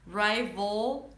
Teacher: So, it's a dark L. Rival. So, don't lift the tongue up. Rival. And then round your lips for the R.